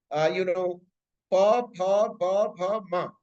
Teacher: Panini's sound production mechanism says that all sounds are being produced by both the lips. दोनों होठों से ये sound बोले जा रहे हैं, ये वाला सीरीज प फ ब भ म.